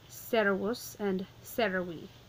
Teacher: It's a two-syllable word, so the accent is going to go on the first of the two syllables.